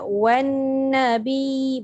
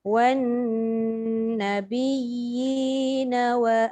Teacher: Wan first kali pastikan nun sabdu tu 2 harakat dengung dia. · Wan nabiyina wa baru cukup 2 harakat gunnah dia.